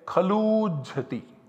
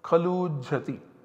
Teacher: of both these ukaras six one one zero one applies and substitutes one long o in place of two so we have kal oo and chati as the generated output